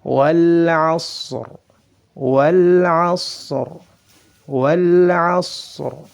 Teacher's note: Ra sukun karena waqaf. Sebelumnya ada huruf isti'la dalam keadaan sukun, dan sebelumnya itu terdapat harakat fathah, maka ra-nya harus dibaca dengan tebal. · Huruf ra itu memiliki sifat takrir. Sifat takrir, bergetarnya ujung lidah. Kemudian huruf ra ini juga memiliki sifat rakhawah.